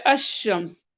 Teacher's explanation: तो लेकिन क्योंकि उसके बाद हरूफ शमसी आते हैं, तो इसलिए वहां पर लाम नहीं पढ़ा जाता, तो हम पढ़ते हैं अशम्स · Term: इदगाम